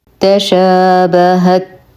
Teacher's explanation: نهمس التاء فهي ساكنة